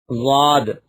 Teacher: زبان کی کروٹ اور اوپر کی داڑھوں کی جڑ سے ادا ہوتا ہے